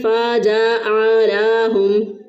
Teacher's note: جیم کے بعد بھی الف داخل کر دیا، عین کے بعد بھی ایک الف داخل کر دیا، لام کے بعد بھی ایک الف داخل کر دیا